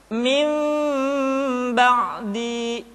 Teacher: tidak boleh tergesa-gesa kemudian diucapkan mim dengan cara yang samar caranya ketika mengucapkan huruf Mim kedua bibir kita agak sedikit direnggangkan tidak sempurna rapat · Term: iqlab